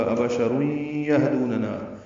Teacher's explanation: آنے کی وجہ سے ادغام ناقص ہے، غنہ ہوگا، ابشر یہدوننا، ہا ساکن پہ ہمس ہے ، دو واو مدہ ہے، نا الف مدہ ہے، دوننا، ابشر · تنوین کے بعد یا آنے کی وجہ سے ادغام ناقص ہے، غنہ ہوگا ، ابشر یہدوننا، ہا ساکن پہ ہمس ہے، دو واو مدہ